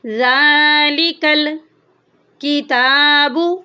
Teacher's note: تا کے اوپر کھڑی زبر ہے، اس کو ہم 1 الف کی مقدار کے برابر لمبا کریں گے۔